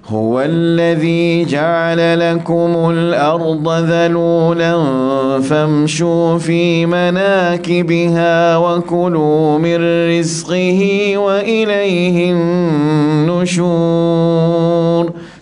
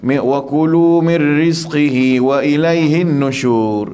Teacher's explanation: Dah kurang dengung 2 harakat, tak boleh. Pastikan wajibul gunnah atas nun yang bersabdu.